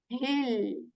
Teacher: this ha is from the portion of the throat that is near to the chest, okay? And same like English alphabet H.